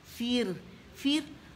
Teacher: رو ساکن ہے, اس سے پہلے کیا آ رہی ہے؟ زیر, تو رو جو ہوگی وہ ترقیق کے ساتھ باریک پڑی جائے گی